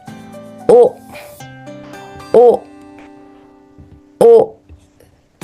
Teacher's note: don't read W sound just say O